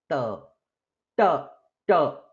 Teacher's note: In ta, the tip of the tongue touches the teeth. In ta, the tip, no, it's not the tip, a little behind portion of the tongue touches the murdha.